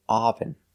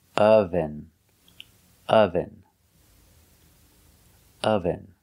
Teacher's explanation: We use the short sound like cup and up. We say relaxed sound.